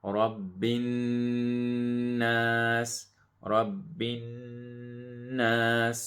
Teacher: So the noon has a shadda, so we make a ghunna, nasal sound for 2 seconds. And then the noon also has a mad, so we stretch it.